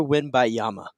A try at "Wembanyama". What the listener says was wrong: Wembanyama. think there's another syllable in there. Wembanyama. Wembanyama.